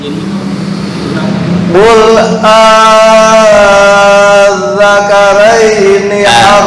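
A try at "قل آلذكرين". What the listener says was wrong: Tasdid di dzal kurang naik. Qul adzakaraini.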